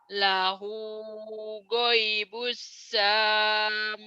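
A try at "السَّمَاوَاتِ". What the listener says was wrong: Pendek. Sama. Sanya pendek. Lahu ghaibus samawati.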